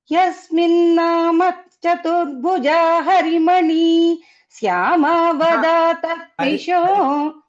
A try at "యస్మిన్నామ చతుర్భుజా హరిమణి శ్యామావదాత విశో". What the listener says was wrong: హరిమణి దగ్గర ఆపకుండా హరిమణి శ్యామావదాత విశో.